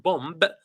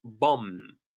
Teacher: the drop bombs over I wanted to notice this word bomb we don't pronounce the last B it's not pronounced bomb but bomb for the countryside Villages are